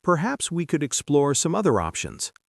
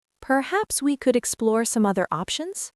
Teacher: Use a rising intonation at the end to make it sound like an invitation rather than a command.